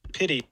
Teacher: The flap in the middle of pity. Pity. Yeah, it's pretty prominent.